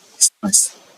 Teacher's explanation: सांस का जब आप उच्चारण करते हैं तो आप देखेंगे कि आपको सीधा नाक से बोलना पड़ रहा है और ये न की ध्वनि नहीं आनी चाहिए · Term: चंद्र बिंदु